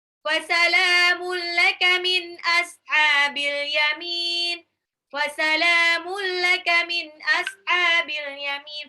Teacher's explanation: Fasalamu lamnya mad tabi'i 2 harokat dan fasalamun laka tanwin ketemu lam idgham bila gunnah